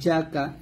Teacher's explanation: হা জিম জবর হাজ, জিম জবর জা, কাফ জবর কা, হাজ্জাকা। এরকম ভাবে হাতে আমরা 4 আলিফ টান দিব, আগে 4 আলিফ টান দিয়ে তারপর জিমকে গিয়ে ধরবো।